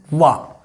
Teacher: वकार का उच्चारण स्थान क्या है? दांत और होठ